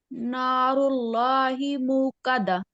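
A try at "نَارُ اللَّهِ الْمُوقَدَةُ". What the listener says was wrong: हिल, आ लाम के साथ मिल जाएगा, नारुल्लाहिल।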